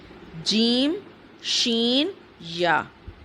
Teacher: مخرج نمبر 6 ہے جیم، شین، یا۔ وسط زبان جب بالمقابل اوپر کے تالو سے لگے تو اس سے جیم، شین، یا ادا ہوتے ہیں